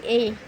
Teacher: ए कंठ तालु से बोला जाता है